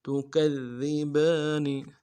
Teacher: ربکما کما تکذبان، تا کو نرم سے ادا کریں گے، کاف کو دال کے ساتھ ملانا ہے. دال کے اوپر تشدید ہے، زور دیں گے. اگلے دال کو باریک کر ادا کریں گے.